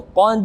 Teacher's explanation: Qad, ada dal mati bertemu dengan kha, tapi dia berada di tengah-tengah ayat atau surah, bukan pada akhir, maka dal mati di sini pantulannya lebih ringan daripada qalqalah kubra, yakni qalqalah sughra